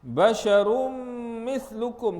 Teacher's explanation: kita memasukkan tanwin ke dalam mim, sebab tu dalam mim tu dia letak sabdu, ya, dengan memasukkan tanwin ke dalam mim beserta dengan dengung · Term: Idgham ma'al ghunnah